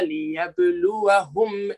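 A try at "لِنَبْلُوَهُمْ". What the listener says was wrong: Linab, not yab.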